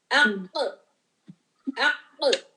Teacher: ہوا بھی بلاک ہے، ساؤنڈ بھی بلاک ہے تو یہ ہو جاتا ہے قلقلہ. جس میں ہوا بھی بلاک ساؤنڈ بھی بلاک وہ قلقلہ ہو جاتا ہے. · قاف میں ہوا کا گزر نہیں ہے. بلاک کر دے رہے ہیں ہم ہوا کو.